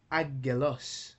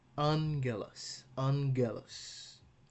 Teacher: When gamma is followed by gamma, kappa, and chi, it is pronounced like N.